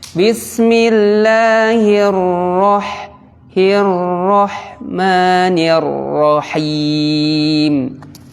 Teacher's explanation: huruf ro sifatnya ketika diberi harokat fathah maka tebal